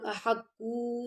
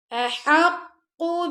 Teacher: قاف کو موٹا پڑھیں گے ہا گلے کے درمیان سے